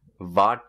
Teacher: so the w turns into a v